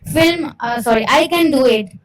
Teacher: Firm, falling tone, showing certainty.